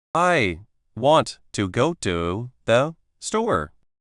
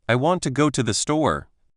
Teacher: Notice how the little words like to and the become very fast and soft. They almost disappear into the beat.